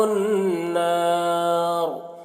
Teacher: نار کے نون میں مشدد ہے، نون میں غنہ ہوگا اور یہاں پر الف مدہ ہے، یہاں پر وقف کریں گے تو را کو پر پڑھیں گے۔